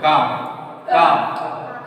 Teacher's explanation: काफ जो है ये उसके नीचे यानी सख्त जो हार्ड तालु है उससे अदा होगा